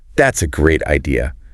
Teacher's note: emphasizing great to show her enthusiasm